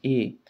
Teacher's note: अ आणि इ यांना मिळून बनतो ए म्हणून हा आहे संयुक्त स्वर दुसरा आहे ऐ ऐ हा शब्द